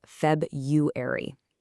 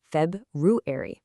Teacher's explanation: There's an R right after the B and it absolutely needs to be heard